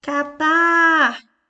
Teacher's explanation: A última sílaba é a mais forte. Portanto, ela é uma palavra oxítona.